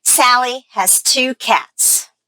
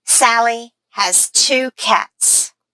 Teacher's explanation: okay I stressed sally two cats these are my content words